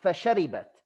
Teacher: But they're only 3 short syllables. Okay, there are 4 harakas, but 3 short syllables, because the last one is a haraka plus a sakin.